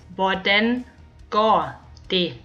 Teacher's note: Notice how we don't pronounce the T in det. We simply say det.